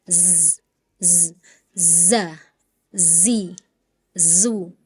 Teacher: zai itu punya sifat yang namanya sofir, atau kita mengenalnya desis. Jadi ada desisnya, z, z, za, zi, zu, baz. · Bunyi 'zai' memiliki ciri khas yang disebut ' safir', atau yang kita kenal sebagai desisan. Jadi seharusnya ada desisan: 'za', 'zi', ' zu'.